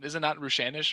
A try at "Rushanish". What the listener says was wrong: You got it right. The emphasis is wrong. It's Rushanish.